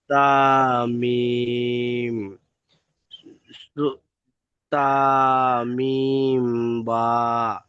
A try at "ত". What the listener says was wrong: তা নয়, ত, মিম, তা, ত, ত এর উপরে